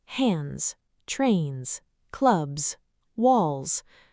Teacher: The letter S at the end doesn't always sound the same. After voiced sounds and vowels, it's pronounced like Z